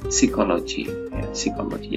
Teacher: psikologi ternyata PS di sini ini dia bukan ups ya, tapi dibunyikan dia biasa S ya